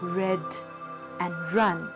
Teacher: In the production of these sounds, the tip of the tongue is raised in the direction of the hinder part of the teeth ridge. The vocal cords vibrate. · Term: frictionless continuant